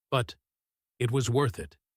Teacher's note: The but it was worth it is a slow, thoughtful conclusion. The stress is on worth.